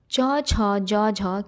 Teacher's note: तो स्पर्श संघर्षी व्यंजन है। च छ ज झ स्पर्श संघर्षी व्यंजन है।